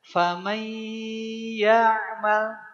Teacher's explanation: Bagaimana cara bi gunnahnya? Setelah mai masukkan pas mainya ke rongga hidung. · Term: idgham bi gunnah